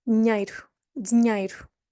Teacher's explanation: Now that I there is hardly pronounced because of the ny sound after.